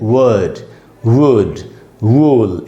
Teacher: व जब बोलेंगे, जो होठ गोल हो जाते हैं हमारे, जैसे सीटी बजाते वक्त, व का साउंड बनता है इससे, इसीलिए हमको इसको व पढ़ना चाहिए।